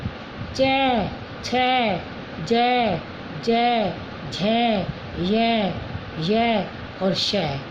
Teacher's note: ये सब किससे बोले जाते हैं, तालु से, यानी तालव्य